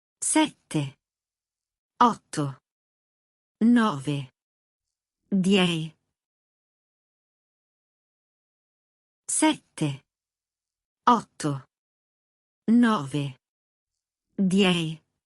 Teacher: Hold the doubled letters in sette and otto — don't rush them.